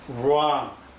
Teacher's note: WR에서는 이 W가 발음이 안 되고 R 발음이 이렇게 살아납니다.